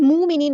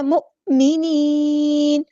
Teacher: حمزہ ساکن ہے تو جھٹکا دینا ہے، مومنین نہیں پڑھنا، مؤمنین، نون ساکن، ہم نون کو ساکن کر دیں گے وقف کرتے ہوئے، اور مد عارض بھی ہوگی یہاں پر۔